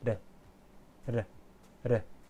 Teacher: In the Japanese pronunciation, there is no English R sound, but a modified L sound or similar to the Spanish R, which the tip of the tongue touches quickly on the roof of the mouth